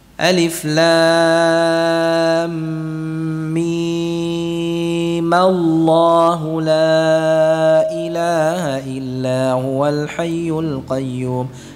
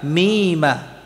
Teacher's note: Kalau disambung maka sukun yang pertama diharakatkan, yaitu sukun mimnya.